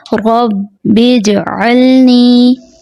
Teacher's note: جیم حرف قلقلہ میں سے ہے، جیم کی آواز پلٹائی جائے گی، عموماً جیم کی آواز پلٹائی نہیں جاتی۔